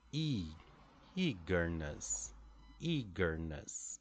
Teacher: in the word eagerness for example the first syllable is the stress · we have one strong syllable followed by two lighter syllables